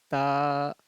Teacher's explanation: جو زبان کی نوک ہے اور اوپر کا جو دانت ہے اس کو ثنائے علیہ کہتے ہیں، اس کا جو جڑ ہے اس سے جا کر کے زبان کی نوک سٹے گی، تب جا کر کے تا ادا ہوگا.